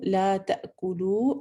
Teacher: حمزہ کا جھٹکا ہے یہاں پہ، کلکلا نہیں کرنا